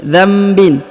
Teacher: Huruf nun sukun bertemu dengan ba ya, maka huruf nun sukunnya berubah menjadi mim ya. Dzambin, bukan lagi dzanbin, tapi dzambin.